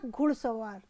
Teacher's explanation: यहां ओ उ में तथा आ अ में परिवर्तित हो रहा है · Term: स्वर परिवर्तन